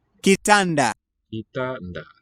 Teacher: I think a complex consonant onset rather than a closed syllable tan. Kitanda.